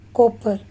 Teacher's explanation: साउंड produce होते हैं that is voiceless साउंड, और इस केस में सॉफ्ट पैलेट रेज्ड होती हैं। प्लेस ऑफ आर्टिकुलेशन बाइलेबियल होता है and the manner of articulation is प्लोजिव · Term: P साउंड